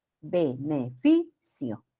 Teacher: en consonante diferente de ns no se coloca el acento escrito grave o llana llamada también paroxítona el acento recae en la penúltima sílaba · El acento recae en la penúltima sílaba. Beneficio. Igual, no se escribe el acento porque termina en vocal.